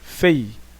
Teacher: o I é a semivogal e o E é a vogal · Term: ditongo